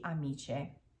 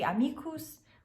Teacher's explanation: pronunciation that the pronunciation of c is going to change so if it's followed by an i or an e it's going to make a ch sound where the other vowels will make a k sound